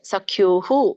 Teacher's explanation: ಪಿತೇವ ಪುತ್ರಸ್ಯ ಸಖೇವ ಸಖ್ಯುಃ. ಸಖ್ಯುಃ ಅಲ್ಲಿ ಉ ಸ್ವರ ಕೂಡಿದೆ, ಹಾಗಾಗಿ ವಿಸರ್ಗ ಕೂಡ ಉ ಉಚ್ಚಾರಣೆ ಬರುತ್ತೆ.